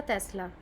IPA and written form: ˈtɛslə (Tesla)